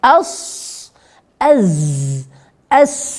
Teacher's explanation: ketika ujung lidah menyentuh menempel ujung gigi seri bawah atau bagian gigi seri bawah ya di situ keluar kemudian suara tajam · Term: safir